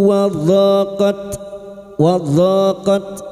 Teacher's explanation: tepi lidah nempel pada gigi gerham atas boleh kiri boleh kanan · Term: huruf dod